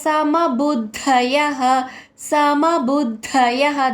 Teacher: విసర్గ ఉచ్చారణ హ కింద పలకాలి